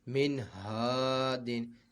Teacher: نون ساکن کے بعد حروف حلقی میں سے حمزہ ہا ہے، تو یہاں پہ اظہار ہوگا، نون ساکن میں غنہ نہیں کریں گے۔ اور یہاں پہ الف مدہ ہے، تو یہاں پہ الف مدہ ہے تو اس کو کھینچ کر بھی پڑھا جائے گا۔